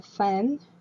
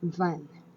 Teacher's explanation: We have the F for voiceless and the V, labial dental. That is the place of articulation, the labial dental.